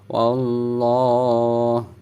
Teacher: sebelum lafaz Allah ada huruf berharokat fathah, maka lafaz Allahnya dibaca tebal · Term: al jalalah tafhim